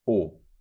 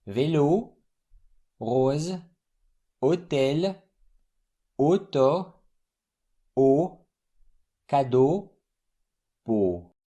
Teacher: all these combinations here are the closed version of O.